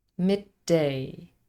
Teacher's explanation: and the next one starts with the same posive D midday a slightly longer D sound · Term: gemination